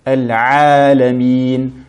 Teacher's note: la lettre Ayn qu'il faut bien prononcer du milieu de la gorge